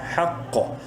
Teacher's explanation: قاف کو منہ بھر کے پڑھیں گے